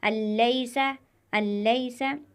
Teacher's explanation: یہاں پر حروف ادغام میں سے لام آیا ہوا ہے تو اس کو ہم گننے کے بغیر ادا کریں گے